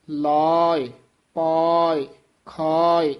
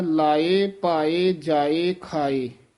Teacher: ਲੱਲੇ ਦੇ ਕੰਨੇ ਨੂੰ ਵਧਾ ਦੇਣਾ ਈੜੀ ਤੇ ਆਵਾਜ਼ ਛੱਡਣੀ ਹੈ